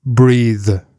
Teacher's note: that's like a voiced TH sound, or a TH sound where the vocal cords are activated.